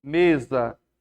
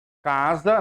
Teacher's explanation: O S está entre vogais, ele está com som de Z